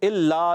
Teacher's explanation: لا مشدد ذرا رک کر ادا کریں گے